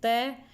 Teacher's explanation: जीभ दांत पे टच हो रही है तो ये दंत्य हो गया